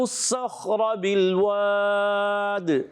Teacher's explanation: را پر زبر، را کو موٹا پر پڑھیں گے. بالواد، آخر میں دال میں قلقلہ بھی کریں گے.